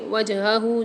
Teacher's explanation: جیم کے اندر قلقلہ کر کے پڑھیں گے، یعنی ڈبل آواز نکلے گی